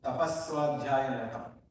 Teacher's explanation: So the visarga changing to sakara is tapasvadhyaya niratam.